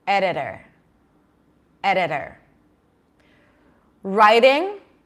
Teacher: The T and the D are between two vowels in unstressed syllables. Both of them sound exactly the same. Editor. Editor.